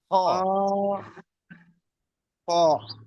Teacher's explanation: খ জাবার খ, মুখ গোল হয় না